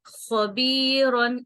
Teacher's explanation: خوا زبر خوا با یا زیر بی خبی را دو زبر رن خبیرن اور یہ والا خوا یہ تھوڑا جیسے گلے میں خراش سی آتی ہے، موٹا پڑا جاتا ہے